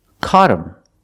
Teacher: But him is not a stressed word, so the H is silent. So you hear caught him.